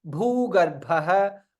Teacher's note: both Bhas Mahaprana. Bha followed by Visarga.